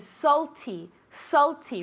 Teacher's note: Really, that A, we pronounce it as if it were an O.